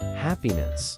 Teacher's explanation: Pronounce happiness as ʻhæpiɪnɪs, with the emphasis on the first syllable, hap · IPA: /ˈhæpi.nɪs/